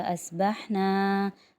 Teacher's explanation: स्वाद मोटा होगा क्योंकि स्वाद हुरूफ मुस्तआलिया में आ रहा है